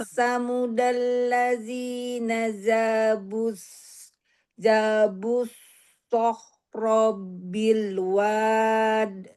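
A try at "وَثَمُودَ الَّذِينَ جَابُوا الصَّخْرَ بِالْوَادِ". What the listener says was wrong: Tapi pas waktu wa-nya jangan panjang lagi, Bu. Wasamuda.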